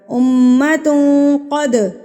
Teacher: میم مشدد پر ہم نے غنہ کرنا ہوتا ہے، یعنی کہ میم کی آواز کو آپ نے ناک میں رکھنا ہے ایک حرکت کے برابر ، امت قد، دال قلقلہ، قد ہلا کے پڑھیں گے